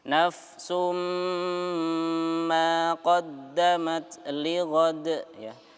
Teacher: Kemudian di situ ada dhammatain bertemu dengan mim ya, maka kita baca idgham bi gunnah ya. Idgham bi gunnah kita masukkan ke huruf mim dengan mendengungkan ya.